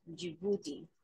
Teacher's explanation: the stress is on the second syllable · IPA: /dʒɪˈbuː.ti/